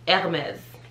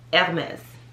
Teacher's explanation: so if you think air and then mes the h is silent